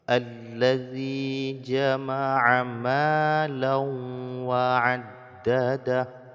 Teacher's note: kemudian tanwin baris dua bertemu dengan wau hukumnya idgham bighhunah jadi idgham disertai dengan dengung ya dimasukkan bunyi tanwin ke dalam wau kemudian didengungkan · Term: idgham bi gunnah